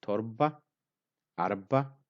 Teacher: in all of these three, the ra sound is silent or kind of semi-silent.